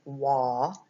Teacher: The A actually sounds like an aw, it sounds more like an O sound. It's wah. The L is a silent L, so you don't even hear the L.